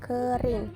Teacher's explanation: vokal I tinggi bawah depan tak bundar